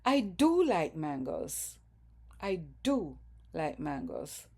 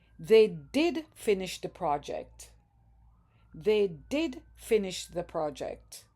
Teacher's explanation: In speech, the do is stressed. There's stress on the do. So, when we speak with emphatic do, we would say, I do like mangoes. · Pronunciation of emphatic do. In speech, the do is stressed. There's stress on the do.